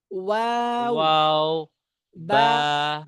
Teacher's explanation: দুই ঠোঁট থেকে উচ্চারিত হয় ওয়াও বা মিম,